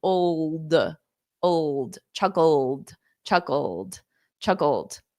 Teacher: So you need that dark L. And then you go from the dark L to a D.